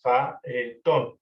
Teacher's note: se produce un hiato entre las vocales A y E de las sílabas fa y E, faetón, porque la vocal es abierta, o más bien porque ambas vocales son abiertas o son fuertes, vocales fuertes, ¿no?